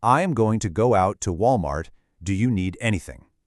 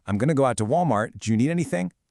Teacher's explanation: Then pay close attention to the end of Walmart and the beginning of do. Walmart ends in a T. Do you begins with a D. And what happens when those meet? Yep, you guessed it, we get that hidden ch sound. · I am going to instantly gets reduced to I'm going to.